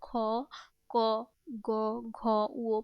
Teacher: ক বর্গীয় যারা ধ্বনি সবাই জিহ্বামূলীয় ধ্বনি